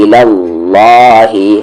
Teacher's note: اور اللہ کا لام یہ ہیوی ہے کیونکہ اس سے پہلے والے حرف پر زبر ہے